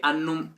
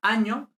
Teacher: la N geminada palataliza en ñ